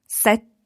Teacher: you need to be very short on your a to allow a very long t sound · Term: double t